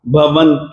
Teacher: ये भवंत, त के कारण से अनुस्वार का उच्चारण भी दंत्य न होगा